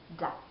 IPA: d